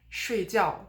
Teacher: You need to have the sharp drop on both parts of the word.